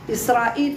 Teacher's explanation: فيها سبب ترقيق ولكن منعت من الترقيق سبب العجمه